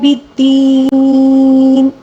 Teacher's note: اگر ساکن آ جائے تو پیچھے یا مدہ کو ہم نے تقریباً 3 الف کے برابر کھینچ کر پڑھنا ہوگا